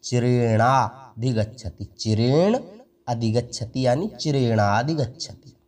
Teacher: इस न में अ है और इस अधिगच्छति का शुरुआती अक्षर अ है, तो इस न का अ और अधिगच्छति का अ ये मिलकर आ हो जाते हैं, तो बन जाता है चिरेणाधिगच्छति, चिरेण अधिगच्छति यानी चिरेणाधिगच्छति।